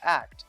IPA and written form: ækt (act)